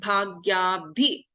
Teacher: So we have Alpaprana Ba and Dhi, Mahaprana Dha.